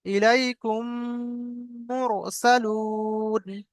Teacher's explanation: ইলাইকুম, আর একালি পরিমাণ গুণনা করতে হবে। তো এখানে কুম বলে একালি পরিমাণ গুণনা করব। · মিম সাকিনের পরে মিম এসেছে, তাই মিমকে, এই আপনার প্রথম মিমকে মিমের সাথে মিলিয়ে, দ্বিতীয় মিমের সাথে মিলিয়ে একালিপ পরিমাণ গুণনা করে পড়তে হবে। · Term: ঈদগামে সাফাবির